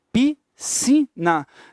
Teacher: você tem que entender o seguinte, que você não pronuncia o S. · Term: dígrafo